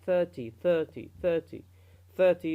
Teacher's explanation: if you read 30, 30, 30, 30, the stress is on the first syllable